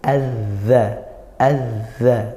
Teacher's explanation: Makhrajnya zal itu ujung lidah bertemu ujung gigi seri atas.